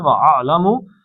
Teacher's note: اعلم حلق کے درمیان سے نکالنا ہے